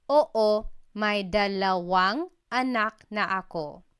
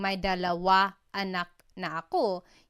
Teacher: you have to add an NG to the end of the word dalawa so that it connects to the word anak